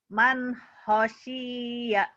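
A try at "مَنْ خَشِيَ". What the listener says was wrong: Kho di Jawa ada o. Kho. Man khosya. Ada o ya di Jawa mah. Ini Quran juga ada huruf o. Khosya.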